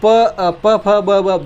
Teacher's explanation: इसमें हमारे होंठ ही हिलते हैं। होठ ऊपर नीचे होते हैं तो ये ओष्ठ, होठ को ओष्ठ कहते हैं, ओष्ठ, और वर्ण हो जाएंगे ओष्ठे, ओष्ठी।